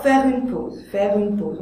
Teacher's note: On fait ici un enchaînement et on laisse tomber le E muet.